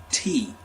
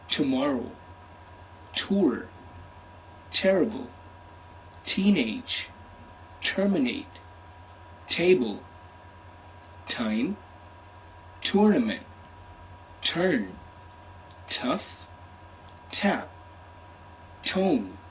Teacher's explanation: In order to produce an American T sound, the tip of your tongue needs to touch on the bottom ridge of your upper gums. Unlike the tip touching in the center of your upper hard palate, like for the Indian T sound.